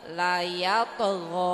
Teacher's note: Jadi to itu salah satu huruf qalqalah. Jadi Ibu harus ada pantulan dulu, ada tekanan ya Bu ya.